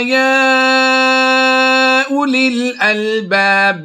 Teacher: یہ پیش کے ساتھ واو ہے، اسے لمبا نہیں کریں گے